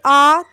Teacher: जब आप आ बोलेंगे, आप बोल के देखिए आ, तो आपका पूरा मुंह खुलेगा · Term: विवृत